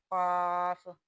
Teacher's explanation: قاف، قاف، یہ بھی حلق سے ادا ہوتا ہے، اس کو حروف لہاتیہ بھی کہا جاتا ہے